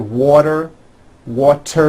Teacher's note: when a t Falls between two vowels turns into a d